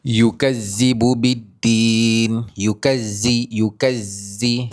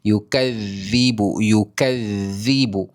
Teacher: Bacaan yang betul hangpa kena bunyikan huruf zal. Kena keluarkan sedikit lidah. Yukazzibu. Yukazzibu baru dia zal bukan zai.